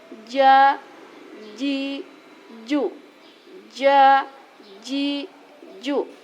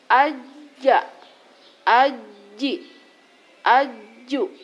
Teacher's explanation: Untuk huruf jim terbentuk atau cara melafalkannya adalah dengan cara lidah menempel pada langit-langit sehingga makhrajnya betul-betul tertutup dengan sempurna.